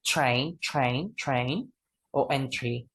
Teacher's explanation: when the alveolar plosive sound, it is connected to the letter R, we change to a fricative sound.